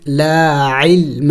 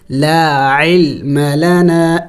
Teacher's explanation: عین بھی حروف حلقی میں سے ہے اور درمیانے حلق سے ادا ہوتے ہیں یعنی وسطی حلق سے